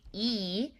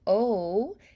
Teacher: So, your lips, your teeth, your tongue, your jaw, how these things shape is going to affect our sound that comes out, right? So, if I shape E, for instance, that's more wide and spread. And if I do O, it's going to be more rounded.